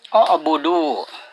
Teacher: Nah, itu disebut mad tabi'i. Cara membacanya dipanjangkan 2 harakat atau 1 alif.